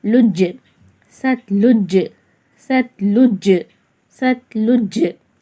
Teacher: சீன்-தா ஜபர் சட், லாம்-ஜீம் பேஷ் லுஜ்: லுஜ், ஜீம் என்பது கல்கலா எழுத்து. கல்கலாவை இரண்டு அசைவுகளுடன் ஓதுங்கள்